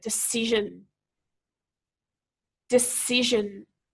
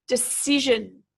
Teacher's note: it's the second syllable that we need to be emphasizing here